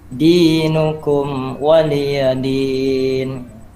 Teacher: mim sukun ya, mim sukunnya satu ketukan ya, jangan sampai berdengung, jangan sampai dinukum waliyadin. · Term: idhar syafawi